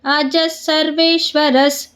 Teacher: ಜ ಮುಂದೆ ವಿಸರ್ಗ ವಿಸರ್ಗದ ಮುಂದೆ ಸ ಇದೆ ಅದಕ್ಕೆ ಅರ್ಧ ಸ